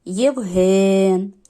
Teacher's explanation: склади значить перший склад це є а другий ген нахил Євген Ми чуємо що подовжений другий з вами склад Значить ми там ставимо наголос